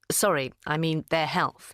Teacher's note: her voice falls on the final stress words